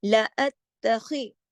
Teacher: ات تا کو 2 دفعہ پڑھا جائے گا, سختی سے جوڑا جائے گا, ڈھیلا ڈھالا نہیں پڑھا جائے گا, ٹھیک ہے. خا کو موٹا پڑھا جائے گا, خراش کے ساتھ پڑھا جائے گا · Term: موٹے حروف